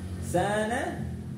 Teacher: Sana contoh dari mad tabi'i, fathah diikuti alif panjang 2 harakat.